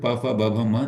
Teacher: बिना ओस्ट को जोड़े प फ ब भ म नहीं बोला जा सकता है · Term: ओट ध्वनि